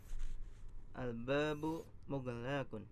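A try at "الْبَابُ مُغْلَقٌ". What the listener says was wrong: Lamnya pendek.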